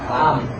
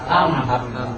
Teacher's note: Dua bagian yang berbenturan. Yang pertama bibir atas dan bibir bawah berbenturan. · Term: mim sukun